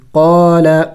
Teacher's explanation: قاف کو لمبا کریں گے، کھینچیں گے، الف مدہ ہے، الف مدہ کو ایک الف کا مقدار کھینچنا ہوتا ہے